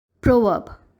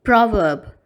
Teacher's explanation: Here, you must notice that the first syllable of the word has a sound O to it, as in pro. And the second syllable of the word is pronounced as verb, without pronouncing the letter R. This is the British pronunciation of the word.